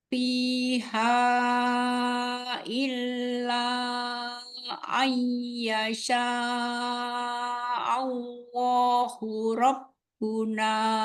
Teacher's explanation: An ketemu yasha'a dan nun ketemu ya itu kan idgham bi gunnah. Dengungnya 3 harokat.